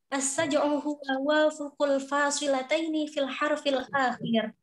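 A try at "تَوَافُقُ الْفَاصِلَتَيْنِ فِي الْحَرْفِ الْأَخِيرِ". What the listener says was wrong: ini Mbak, ini ada yang salah. Tawafuk, bukan wafuk. Nggak ada bahasa Arab wafuk, nggak ada. Tawafukul fasilataini fil harfil akhir. Ya, kurang nih.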